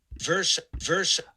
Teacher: we're all kind of taught the schwa r uh sequence there but there's no real schwa there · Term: slavic r